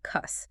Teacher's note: The word curse dropped the R, stretched the vowel, and became cuss